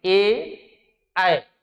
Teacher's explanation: ए और ऐ जो वर्ण है कंठ और ताल के मिलने से उच्चारित होते हैं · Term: कंठ ताल